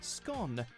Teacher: the Republic of Ireland you'll also hear scone like tone but Northern Ireland Northern England Wales and Scotland all usually use the shorter scone